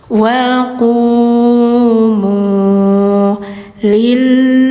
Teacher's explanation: Karena didahului harakat bawah kasrah. Jadi bunyinya harus tipis.